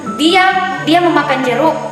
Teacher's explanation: Tekanan pada jeruk maksudnya yang dia makan itu jeruk, bukan buah-buah yang lain